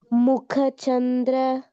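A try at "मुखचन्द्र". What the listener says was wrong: This ka is Mahaprana, right? So that ha sound should come. Mukha Chandra. And another mistake or tendency that comes for everybody is when we have one Mahaprana, the second one will become Mahaprana, right? Like Mukha Chandra, right?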